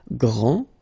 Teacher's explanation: This final D is not pronounced. Okay, so grand, and then the feminine form, grande.